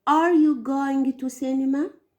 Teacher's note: Lower intonation, clear disappointment or disinterest.